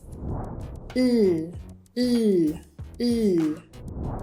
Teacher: my tongue is raised up towards the roof of my mouth and it blocks the airstream, which then finds its way out the mouth through the lateral of my mouth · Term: L sound